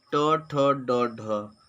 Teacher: ट ठ ड ढ मूर्धा से बोली जाने वाली ध्वनियाँ होती हैं